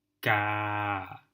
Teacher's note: my pronunciation follows a very similar pitch contour to the native speakers it has this flat line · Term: mid tone